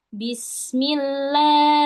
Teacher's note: Huruf ha keluar dari tenggorokan bawah.